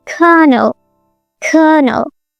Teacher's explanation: in British English, it's also colonel, but without that strong R, just a long vowel sound